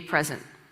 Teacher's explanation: a present is a noun and the stresses on the first syllable